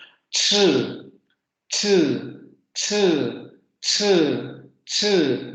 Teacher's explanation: Si ustedes hacen el fonema ch, se darán cuenta que es bastante diferente a los fonemas p, t, y a los fonemas f, v, porque tienen como que se combinan estos dos momentos. El fonema ch tiene primero un cierre total, y luego se produce esta pequeña abertura para producir ese sonido fricativo.